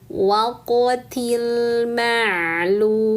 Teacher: waquti qofnya sukun qalqalahkan dulu. Maka bunyinya waqotil ma'lum ti langsung sambar ke lam sukun til ma'lum mad arid lukun panjangkan dulu lamnya karena dhamah ketemu wau sukun lalu sukunkan mimnya ila yaumil waqtil Um ini ayat 38. · qafnya sukun, qalqalahkan dulu, maka bunyinya waqtil ma'lum. Ti langsung sambar ke lam sukun, til ma'lum.